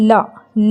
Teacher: ल बोलने में हमारी ज़बान पलट रही है पर लुढ़क नहीं रही है